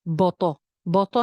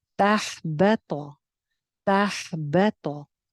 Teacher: बा बारीक है, सिर्फ तो मोटी है